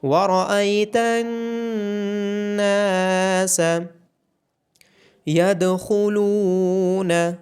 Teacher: دال پہ قلقلہ کیا جائے گا، خا کو موٹا پڑا جائے گا اور لام کے بعد واو مدہ ہونے کی وجہ سے لام کو لمبا کیا جائے گا۔